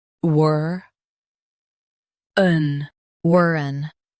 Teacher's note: Stress war and soften un.